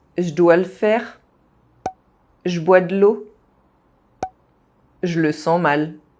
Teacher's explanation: The vowel E, when pronounced [ə], is also very often dropped.